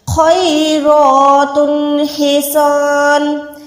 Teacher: खो को मोटा रखें, रॉ को मोटा रखें